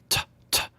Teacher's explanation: The letter T is unvoiced because your vocal cords are not vibrating as you say it.